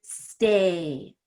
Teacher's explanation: Just stay, really stretch that out. There's no consonant after it. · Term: long A